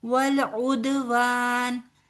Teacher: दाल के ऊपर कलकला होगा क्योंकि दाल साकिन है · ٹھیک ہے، علیہم بالاسم والعدوان، دال کے اوپر کلکلا ہوگا کیونکہ دال ساکن ہے